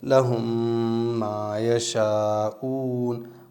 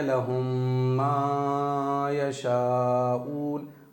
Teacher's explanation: ماں کو میں نے تھوڑا سا ہی کھینچا ہے۔ بہت سارے لوگ کیا کرتے ہیں لہم ما یشاؤون، ماں پہ بھی ایکسٹرا مد کر دیا ہے، یہاں صرف ایک الف ہی کھینچیں گے۔